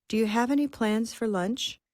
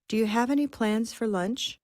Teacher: It's fast, but it's comprehensible because we start at the end, and this is the main focus stress, lunch. Okay, and we start with lunch, we work backward to plans, and then we have.